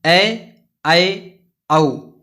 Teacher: इनके उच्चारण में मुख जो है वो आधा खुलता है। इनकी संख्या 3 है, ए, ऐ, औ, है ना, ऐ, ऐ, औ। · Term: अर्धविव्रत स्वर